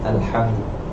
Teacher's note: Makhraj huruf ha ni dekat ustal halki, dekat pertengahan kepada halqum. Jadi ada yang tukar kepada ha simpul.